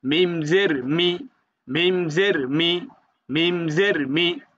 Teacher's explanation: মিম হচ্ছে দুই ঠোঁটের শুকনা জায়গা হইতে উচ্চারণ হবে